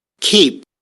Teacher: here we have just a burst, not very loud, and then some aspirating noise